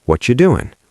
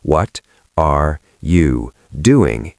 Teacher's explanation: If you're trying to speak with zero lag, maybe the American lazy style is easier for flow. Sometimes we connect everything. What are you doing becomes what you doing. One sound. If you try to enunciate every letter, what are you doing, you will lag.